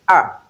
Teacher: Then number 10 which is a is described as short low central unrounded vowel